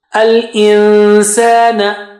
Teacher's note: Go close to the makhraj of sin and then take the sound out from your nose. Al-insana. Don't say al-insan.